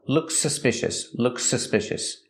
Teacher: if we link the words looks suspicious how do we pronounce them we only hear One S sound